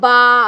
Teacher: बा दोनों होंठों के तर हिस्से से अदा होता है, बा। और खुश्क हिस्से से कौन सा अदा होता है?